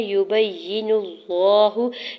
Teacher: نون کی پیش کو لام جلالہ کے ساتھ ملاتے ہوئے لام جلالہ کو پر پڑھیں گے